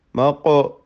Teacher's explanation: ഖാഫിൻ്റെ സുക്കൂൻ ഖൽഖല നൽകി ശബ്ദം ചലിപ്പിക്കുക